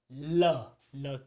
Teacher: जिनके उच्चारण में जो श्वास होती है जिह्वा के एक या दोनों पार्श्वों से होकर निकलती है। जैसे ल के उच्चारण में। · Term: पार्श्विक